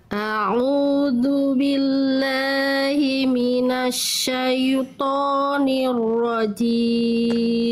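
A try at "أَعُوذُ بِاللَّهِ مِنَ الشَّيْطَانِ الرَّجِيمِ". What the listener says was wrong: Bagus, sekali lagi tinggal tebalkan huruf tebal. Ya, huruf ro, huruf to diangkat pangkal lidahnya. A'udzu billahi minasyaitonir rajim.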